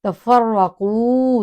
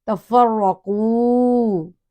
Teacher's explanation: والا حرف ایکسپلینیشن پہلے ہو گیا کالذین میں، اب تفرقو میں را فل ماؤتھ پڑھا جائے گا، موٹائی میں پڑھا جائے گا، کیوں کہ را کے اوپر زبر آ گئی